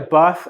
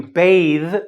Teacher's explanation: Some of you have problems with the th sound because it can be either ffff, more like an F, or vvvv, it buzzes